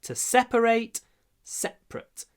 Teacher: Все равно ударение на первом слоге, а вот ate в конце по-другому произносится.